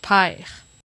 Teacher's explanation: in Quebec French, long vowels and nasal vowels become diphthongs in open syllables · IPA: [paɪ̯ʁ]